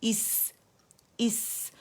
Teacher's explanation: اچھا ہم نے ایس کر کے مد نہیں بنانا، حمزہ کسرہ ای کی طرح ادا کرنا ہے، حمزہ کسرہ سین سکون اس، اور سین کا رخاوہ، اس کا ہمس، اس کی سیٹی واضح کرنی ہے، صفیر